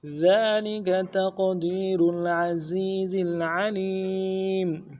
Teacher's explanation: ذالک تقدیر العزیز العلیم، ذالک تقدیر العزیز العلیم، ذالک میں ذال کے اوپر کھڑا زبر ہے، ایک الف دال کھینچیں گے، لم کو نرم سے پڑھیں گے، کاف کو بھی نرم سے پڑھیں گے۔ ذالک تقدیر تا کو قوف کے ساتھ ملانا ہے، قوف حروف قلقلہ میں سے قلقلہ کریں گے